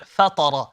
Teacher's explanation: Now the letter fa is an empty letter, the letter ta is a full mouth letter, and so is the letter ra. Now when we are reciting, naturally we will, because we're trying to make the ta full mouth and the ra full mouth, we will make the fa full mouth, but that's not correct.